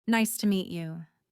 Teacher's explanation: The voice goes slightly up on me, then down on you. This makes it sound friendly and polite.